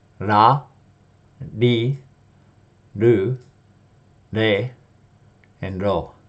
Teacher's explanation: Now we have the R row, and this one is my least favorite row to explain because first of all, there's really no R, hard R sound in Japanese, nor is there an L sound, and people say this is sort of the middle between the R and the L